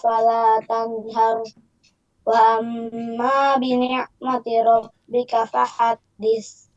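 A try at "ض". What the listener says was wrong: Cuma nanti huruf dhodnya nih. Addo. Nah, itu si bibirnya juga jangan ikut ya. Dhadidu. Nah, tapi kalau lagi dhammah nggak apa-apa manyun. Ya, tapi ketika do jangan do. Si bibirnya jangan ikut. Jangan do gitu ya.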